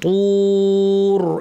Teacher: এখানে রটা ভারী করে আমাদেরকে থামতে হবে